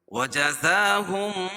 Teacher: زا پر کھڑا زبر قائم مقام الف مدہ کہ اس کو ایک الف کے برابر کھینچ کے پڑھیں گے